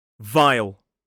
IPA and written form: vaɪl (vile)